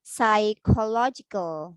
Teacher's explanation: you should not pronounce the letter P in the beginning of this word